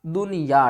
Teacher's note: یہاں پر اس نون کے اوپر غنہ نہیں ہوگا